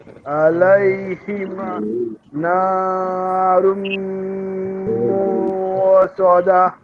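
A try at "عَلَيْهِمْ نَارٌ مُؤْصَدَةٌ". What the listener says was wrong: এখানে হামজা উচ্চারণটা মনে হয় একটু ত্রুটি আছে ।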